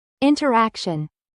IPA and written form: ˌɪntərˈækʃən (INTERACTION)